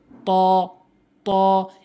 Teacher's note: জিহ্বার আগাটি নিয়ে সামনে দুইটি দাঁতের গোড়াতে লাগাবেন